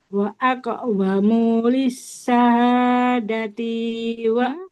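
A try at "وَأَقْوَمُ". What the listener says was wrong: Wa aqwamu mimnya enggak boleh panjang. Wa aqwamu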